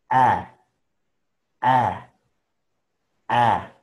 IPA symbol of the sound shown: æ